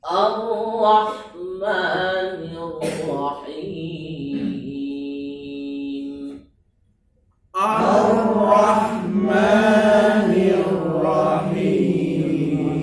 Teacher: Huruf ra ini takrir. Takrir itu dua getaran, jangan terlalu berlebihan.